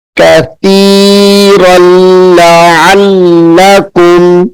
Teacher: دو زبر ہیں یعنی تنوین ہے، تو اس را کو ہم لام کے ساتھ ملا کر سختی سے پڑھیں گے